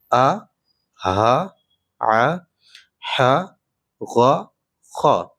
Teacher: 6 ہے حلق سے آ، ہا، ع، ح، غ، خا۔